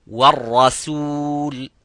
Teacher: the ra is mufakham, as you can see, but the sin is muraqqaq